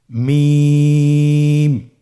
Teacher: 2 ঠোঁট চেপে ধরে আমরা উচ্চারণ করব মিম